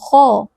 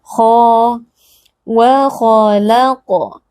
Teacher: huruf K adalah huruf tebal maka naikkan pangkal lidah kita Jadi bukan memajukan bibir Ya karena tebal atau tipisnya huruf Itu